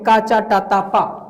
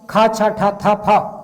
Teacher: पहला अल्प प्राण, दूसरा महाप्राण, तीसरा अल्प प्राण, चौथा महाप्राण, पांचवा अल्प प्राण।